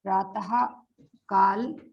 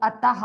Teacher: विसर्ग का उच्चारण हा व्यंजन की तरह स्वरयंत्र से होता है